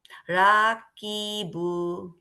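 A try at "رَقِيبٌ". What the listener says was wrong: রা না, র। রতে আলিফ নাই, রকিবু।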